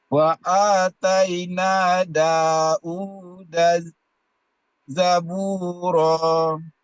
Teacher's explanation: Jangan u hamzah ya, tapi wawu.